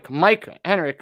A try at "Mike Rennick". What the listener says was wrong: Rennick. Yeah, the H is silent. He told me.